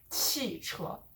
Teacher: So that 车, you're not stressing that as much, but the 气, you are stressing it because that's the particular morpheme that you want to emphasize.